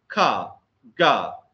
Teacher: the air passage is closed by pressing the back of the tongue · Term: valiant plosives, velar plosives